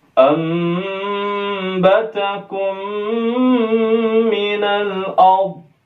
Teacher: Kita baca nunnya menjadi mim